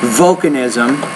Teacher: When you say that first word, volcanism, put more stress on the first syllable.